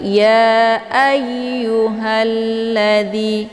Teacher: Kemudian ayu ini ada tasydid dia, jadi cara bacanya a-nya ditekan kemudian dileburkan ke dalam huruf ya. Ya ayu, bukan dibaca ayu ya, tapi ya ayyuhalladzi.